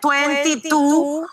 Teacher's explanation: even sounds like it's interdental like her tongue is between her teeth and you do that just by sliding your tongue forward literally